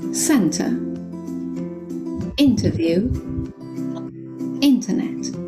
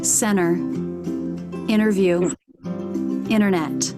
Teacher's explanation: in American English the letter T is sometimes dropped after an N for example in British English we would say center interview internet